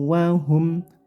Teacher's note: humnya singkat saja karena ini idhar syafawi, mim sukun bertemu fa ya, dibaca jelas nggak boleh dengung